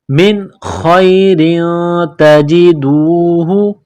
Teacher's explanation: لِأَنفُسِكُم مِّنْ خَيْرٍ، خا یا زبر خی، را دو زیر، تنوین کے بعد تا ہے، حروف اخفا ہے تو یہاں تنوین پر غنہ کریں گے، آواز ناک میں چھپائیں گے